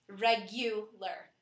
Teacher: In English, the U is stressed, regular.